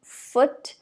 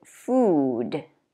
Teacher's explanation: the first one, foot, is more relaxed, and the second one, food, is longer and tighter, more tense.